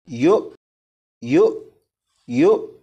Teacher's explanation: यहाँ पर आप देखें वाव के ऊपर हमज़ा है, हमज़ा के ऊपर जज़्म है, लिहाजा ये हमज़ा साकिना हुआ। हमज़ा साकिना को झटका देकर पढ़ेंगे